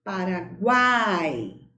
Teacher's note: a letra U é pronunciada com menos intensidade. A letra A é pronunciada com mais força, com mais intensidade. E a letra I com menos força também.